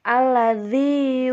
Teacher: Ketika alladzi itu ujung lidah menempel pada gigi atas depan dan gigi atas bawah